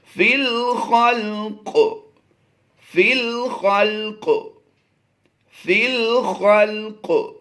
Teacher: قاف کو ہم نے حروف مصالیہ کی وجہ سے پر پڑھنا ہے، اور یہ زیر آپ بلو کلر میں دیکھ رہے ہیں جو یہ زیر جزم کے ساتھ بدل جائے گی۔